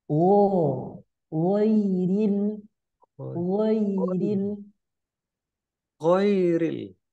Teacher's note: Pangkal tenggorokan atas, ya, keluar dari tenggorokan bagian atas ya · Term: huruf wain